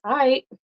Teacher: You almost don't hear the L, but I do pronounce that.